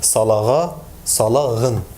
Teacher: when it's intervocalic position and preceded by a back vowel, it's articulated as G, as a voiced velar fricative